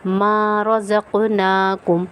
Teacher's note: قاف پہ ہم کیا کریں گے قلقلہ، قلقلہ کے معنی کیا ہے، آواز کا پلٹ کر آنا